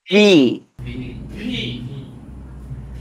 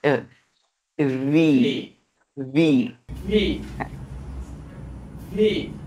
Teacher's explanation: উপরের দাঁত নিচের ঠোঁটে হালকা করে স্পর্শ করে বলেন V